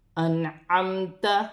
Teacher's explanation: یا ساکن سے پہلے زبر یالین بنے گی، اسے کھینچا نہیں جائے گا · نون ساکن میں غنہ نہیں کیا جائے گا، آگے حروف حلقی میں سے عین ہے، تو نون ساکن میں غنہ نہیں ہوگا، میم ساکن ہے، میم ساکن میں غنہ نہیں ہوگا۔